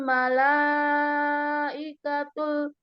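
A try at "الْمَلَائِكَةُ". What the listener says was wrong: jangan ikatul. Ikatul ruhu fiha.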